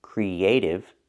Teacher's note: When I link the E sound and the A sound, creative, I use the Y sound in the middle